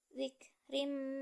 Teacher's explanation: melebur dan dengung pada bacaan zikrim, maka dibaca melebur dan dengung karena tanwin bertemu dengan huruf mim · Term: idgham bigunnah